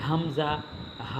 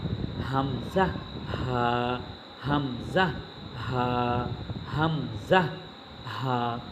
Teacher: দেখেন, এই হামজা হা বলতেছি, এখানে আমার যে উচ্চারণের সময় মুখ থেকে যে বাতাস বের হচ্ছে, এটা কোথাও বাধাপ্রাপ্ত হচ্ছে না।